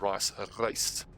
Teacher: that guttural G and the rolling of the R